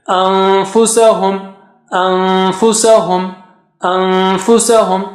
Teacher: go close to the makhraj of fa and then take the sound from your nose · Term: noon sakina followed by fa